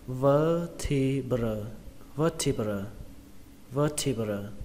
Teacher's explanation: Đốt sống thì số ít của nó thì là cái từ này các bạn nhé, các bạn đọc là vertebra, vertebra, vertebra. Trọng âm của từ này rơi vào âm đầu tiên, âm vơ trong từ vơ đũa